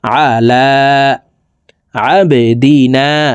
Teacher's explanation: চাপ দিয়ে উচ্চারণ করব আইন জবর আ লাম খারা জবর আলা লামের উপরে খারা জবর আছে এক আলিফ টেনে পড়বো